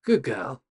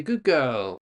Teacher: So the D changes the sound to become more like a G sound.